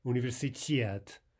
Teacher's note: Now note here how the stress falls on the final syllable. That can be a bit difficult because it means you've got to reserve that emphasis until the very end of the word.